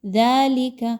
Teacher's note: دال کھڑی زبر دا، 2 حرکات کے برابر اس کی ادائیگی رکھیے